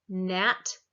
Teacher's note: the alveolar we put our tongue to our alveolar ridge for nat